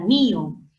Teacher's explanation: en mío el acento no recae en la O, en la abierta, sino en la cerrada. Eso es hiato acentual.